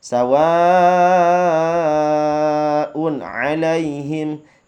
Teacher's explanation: sawa dibaca panjang 5 harokat